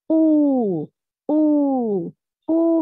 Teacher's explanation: Ooh, ooh, ooh means the lips is round. Raise your tongue. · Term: mad with wow